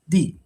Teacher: You see the first di is falling, like di. That's why you need to emphasize it when you pronounce uh pronouncing this one say D.